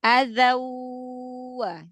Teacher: Tapi kalau yang apa idgham bigunah yang tanwin ketemu wawu, alirkan aja